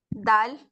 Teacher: It is pronounced when the tip of your tongue touches the roots of your top front teeth.